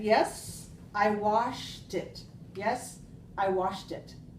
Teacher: That's a very good linking that you did with the t sound on the end